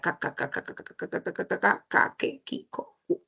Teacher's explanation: Luego tenemos a la velar, que es el sonido de la k, que, kiko, ¿no? Y está, es oclusiva, es sorda.